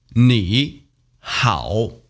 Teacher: there are two third tone together here knee how the first one the e has to turn into